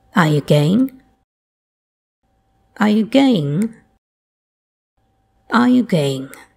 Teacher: the pitch starts high then falls slightly without coming back up again